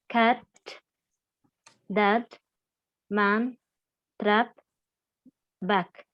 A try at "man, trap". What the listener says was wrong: Так, два слова. Man и trap не через A, а через говорим, да? Man, trap.